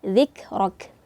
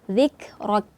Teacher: zikrok itu harus ada terasa hembusan angin dan nafasnya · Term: sifat Hamas